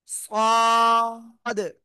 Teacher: জিব্বার আগা সামনে নিচে দুই দাতের পেটও আগার সাথে লাগবে। লাগিয়ে একটু মোটা আওয়াজে পড়ব।